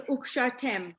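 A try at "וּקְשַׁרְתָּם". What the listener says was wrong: the last letter, the last syllable, ukshar, tam. You've been saying tem, you said it for the one above, Vishina tem.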